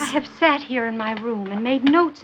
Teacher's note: Her voice is full of that breathy, wideeyed wonder you find in some classical actresses.